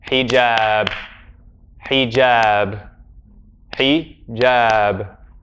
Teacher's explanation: The second vowel is 2 beats. The first one is 1 beat.